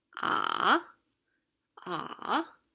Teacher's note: The third tone it's generally just, it's not a straight line, but it starts, so it's very low in the middle. It's the lowest in the middle, and where you start and where you end are actually just a little bit higher than the lowest point.